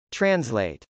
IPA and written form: trənzlˈeɪt (translate)